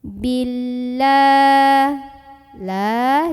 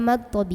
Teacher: ini karena ada huruf yang berbaris fathah berdiri yaitu huruf lam maka cara membunyikannya huruf lam ini dipanjangkan dua harokat saja